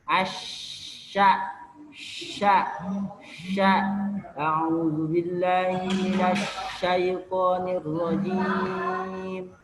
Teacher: Tapasyi. Tersebarnya udara pada seluruh mulut ketika mengucapkan jadi menyeluruh, tersebar, dia menyeluruh. Jadi napasnya itu menyeluruh ataupun suaranya tidak seperti al-inhirab.